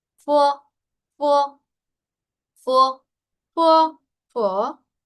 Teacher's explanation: Hay una ligera U por ahí metidita, por ahí colada, muy chiquita. Cuando una sílaba, pues del pinyin es una consonante más una O.